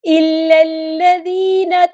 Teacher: ہم نے لام کو لام کے ساتھ ملا دینا ہے. حمزۃ الوصل ہمارا ڈراپ ہو جائے گا.